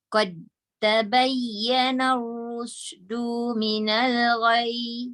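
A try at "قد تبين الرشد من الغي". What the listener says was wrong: Du tak panjang.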